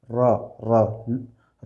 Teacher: लुठित में र र र बोलेंगे तो यहाँ पे आवाज़ मतलब गूंज रहा है